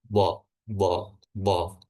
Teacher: lidah bagian belakangnya, pangkal lidahnya naik dan rongga mulutnya menipis ya, menyempit